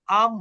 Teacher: এই নুন সাকিনের পরে যদি বা আসে তাহলে নুনটাকে মিম দ্বারা পরিবর্তন করতে হবে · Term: ইকলাব